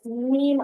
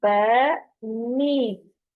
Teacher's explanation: ब ब होंठों को स्माइल करना है इसको अदा करते हुए। ब मीम होंठों का अंदरूनी खुश्क हिस्सा जो है वो आपस में मिलता है तो मीम अदा होता है